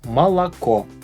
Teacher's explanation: This word has 3 O's in it, but 2 of them sound like A. Молоко. That's because the last O is stressed and the first 2 don't have stress on them.